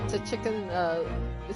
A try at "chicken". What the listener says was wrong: it's just chicken. It's literally just chicken. The T is silent.